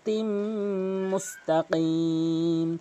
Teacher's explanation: এখানে অধিকাংশ লোক মুস্তাকিম বলে কফের জায়গায় কাফের উচ্চারণ করে থাকে। অবশ্যই আপনি কফের উচ্চারণ করবেন, জিব্বার গোড়া উপরে তালু থেকে